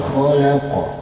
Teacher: Huruf qaf yang berada di akhir kalimat dan disukunkan karena waqaf dihukumi qalqalah kubra dibaca dengan pantulan tebal.